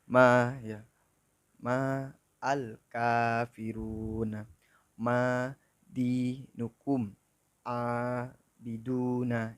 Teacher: bacaan panjang 2 harokat yaitu biasa disebut dengan mat tabi'i